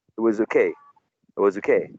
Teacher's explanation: So you can use a schwa in was, and you can say it was okay.